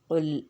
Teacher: سورہ فلق، قل لام پہ توسط، لام ہلے گا نہیں، قل لام پہ جما کے رکھیں گے آواز